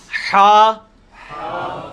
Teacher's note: یہ وسط حلق سے یعنی حلق کے درمیان سے نکلتا ہے. یہ کبھی آپ وہ گلے والی ٹافی کھائیں نا، وہ والی آواز ایکزیکٹ بالکل کلیئر وہاں سے جو نکلتی ہے نا، یہ ہا کا مخرج وہی ہے. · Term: حلوائی والا جو ہا